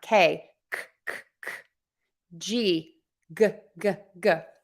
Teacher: tip of the tongue is down back of the tongue is pulled high up